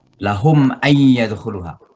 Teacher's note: lahum ay itu namanya izhar mimi, jadi jelas bacaan mimnya.